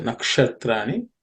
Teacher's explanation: And the word nakshatra, the naksha, the ksha is cerebral sha. So nakshatrani.